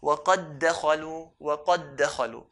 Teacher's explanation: we merge the first dal into the second one